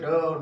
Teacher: जिसमें मूर्धा का प्रयोग होता है, ड और ढ है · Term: उच्छिप्त व्यंजन